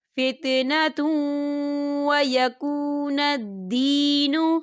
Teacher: تنوین کے بعد واو آ رہا ہے، اور واو جو ہے حروف یرملون میں سے ہے تو یہاں پر ادغام ہوگا تھوڑا سا غننے کے ساتھ